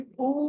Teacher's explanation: అలాగే మహాప్రాణం కూడా ఒత్తి పలకాలి